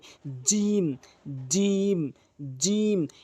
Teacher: জিহ্বার মাঝখানটা উপরের তালুর সঙ্গে লাগালে এভাবে সঠিক উচ্চারণ হবে।